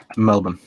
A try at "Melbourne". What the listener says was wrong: There's an R there.